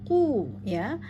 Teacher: Ku pada qaf berdomah, pastikan bibir kita mencucu agar terbaca dan terdengar jelas.